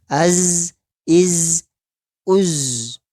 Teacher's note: Nah, yang monyong hanya u-nya. U. Begitu sampai di zai, kita kembalikan ke rahang tipis.